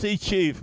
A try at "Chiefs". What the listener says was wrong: Yeah, it does sound like you're not adding the S there. The S seems to be missing from what you're saying.